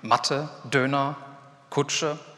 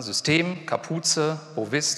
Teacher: Das heißt, die bestehen aus zwei Silben und haben die erste Silbe betont. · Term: Erstsilbenbetonung